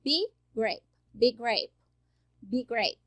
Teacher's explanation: Eu tenho big e eu tenho grape, big grape, que fica, né, GG, eu vou pronunciar apenas uma vez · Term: consoante mais consoante